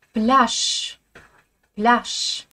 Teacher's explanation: Le mot plage se dit en russe avec un ch final. Le je français n'est jamais prononcé.